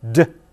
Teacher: And pay attention to where the tip of your tongue is. Now, in English, for d, the tip of the tongue is at the ridge just behind the teeth, the so-called alveolar ridge